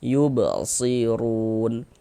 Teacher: Huruf ro ini memiliki harakat dhamah, maka huruf ro juga dibaca tabkhim, dibaca tebal. Kemudian run dibaca panjang.